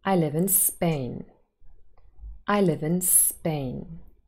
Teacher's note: this has a falling intonation the sentence it is a statement